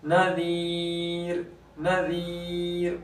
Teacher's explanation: را ساکن سے پہلے بھی یا ساکن ہے تو پھر اس را کو باریک کریں گے